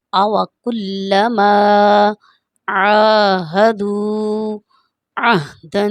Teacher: یہاں پر میں نے یہ دیکھیں ہا کس طرح سے پڑھی ہے، یہ ہا حلوے والی ہا نہیں ہے، ہا ایک حلق سے ادا ہوتی ہے اور یہ سینے والے سائڈ سے ادا ہوتی ہے